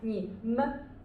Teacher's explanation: the neutral tone is voiceless and it's very short